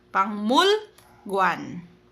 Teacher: kapag kiyok sinundan po ng miyam, magiging NG sound daw po si kiyok